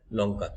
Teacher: লটা তোমার দাঁতের গোড়ায় লাগে, অর্থাৎ দন্ত মূলীয়। আসলে প্রকৃত ল আমরা যে উচ্চারণ করি দাঁতের গোড়াতে উচ্চারণ হয় লঙ্কা।